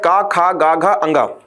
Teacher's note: और जैसे ही आप ख बोलेंगे आपको महसूस हो पाएगा कि ख के उच्चारण पर क्या हो रहा है कि प्राण वायु मतलब जो हमारे मुख से वायु निकल रही है वह हमारे हाथ से टकरा रही है। तो जब किसी वर्ण के उच्चारण में प्राण वायु हमारी हथ से टकराएगी उसको हम बोलेंगे महाप्राण और नहीं टकराएगी तो वो होगा आपका अल्पप्राण।